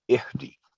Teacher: دی کی آواز بھی شارٹ ہوگی 1 سیکنڈ